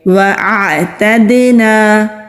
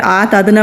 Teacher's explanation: پہلے حمزہ کی آواز پھر عین کی آواز، بعض لوگ پڑھتے ہوئے آتدنا پڑھ دیتے ہیں، عین کو نہیں پڑھتے تو یہ بھی غلطی ہو جاتی ہے۔